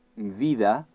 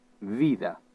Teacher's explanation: En pronunciar el so inicial de la paraula bota, es produeix un contacte entre els dos llavis. En canvi, en pronunciar el de la paraula vida, no hi ha contacte entre els dos llavis, sinó que el llavi inferior s'aproxima a les dents superiors sense impedir l'eixida de l'aire, però produint una fricció.